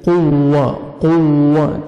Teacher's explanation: قاف کو موٹا کر کے پڑھنا ہے، واو شد ہے سختی سے ملائیں گے